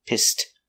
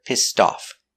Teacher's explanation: We use the t-t sound for the ed, pissed, and off together, pissed off. Link the sounds.